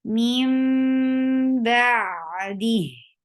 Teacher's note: So you keep your sound in your nose for a longer time, and you keep changing the sound of noon into meme. Mim ba'di. For ba, open your jaws. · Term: iqlab